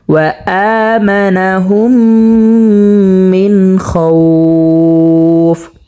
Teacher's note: এখানে মধ্যে লিন হয়েছে, এক আলিফ পরিমাণ টানিয়ে পড়তে হবে।